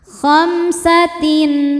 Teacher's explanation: Tin ada hukum izhar halqi. Karena ada tanwin kasrah menghadapi huruf halqi atau tenggorokan yaitu hamzah. Maka tanwin dibaca jelas. · Kemudian ada izhar syafawi. Karena mim sukun menghadapi huruf selain mim dan ba yaitu sin. Maka mim sukun dibaca jelas.